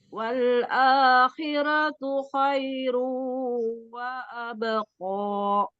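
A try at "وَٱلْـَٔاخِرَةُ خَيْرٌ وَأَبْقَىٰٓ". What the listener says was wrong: Umi kan ko-nya tuh masih ko gitu kan, ada maksudnya dimajuin tuh bibirnya, jangan wa abqa dibuka. Wa abqa. Ya Umi kan bacanya wa abqa gitu kan, ada maju bibir tuh ya. Padahal qafnya kan alisan, jadi bacanya wa abqa. Ko.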